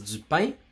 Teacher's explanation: Je vais pas prononcer la voyelle nasale française